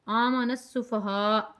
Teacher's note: 3 کھڑے زبروں کے برابر آپ نے کھینچ کر پڑھنی ہے، اور یہاں پہ آپ نے وقف کرنا ہوگا آ کے.